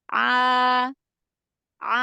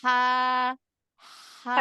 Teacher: Kalau huruf ain, dia lebih turun ke bawah. Lebih turun ke bawah dibanding dengan huruf ha. Kalau huruf ha, dia lebih naik dari huruf ain.